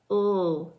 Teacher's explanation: Ul is a voiced alveolar liquid.